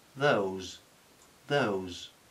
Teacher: un diptongo Those y una s Sonora